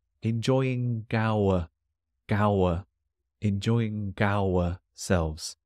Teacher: I think in the British accent, the letter G does like to jump over to the next word.